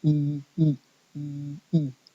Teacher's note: it's the same position you don't move your tongue you just add length to one of them okay so in in English then we have these two uh